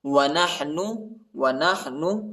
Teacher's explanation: نون کو کھینچنا نہیں ہے، نون پیش نو